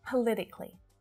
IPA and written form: pə -'lɪ -tɪ -kli (politically)